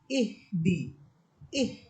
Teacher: হা এর উচ্চারণ হবে কিন্তু বাতাসের শব্দ হবে না যেমন ইহদি এখানে কিন্তু বাতাসের শব্দ হইতেছে না শুধু হা এর উচ্চারণ হতেছে